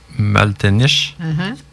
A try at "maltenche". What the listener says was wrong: Maltenche. Oui, le I ne se prononce pas. Maltenche.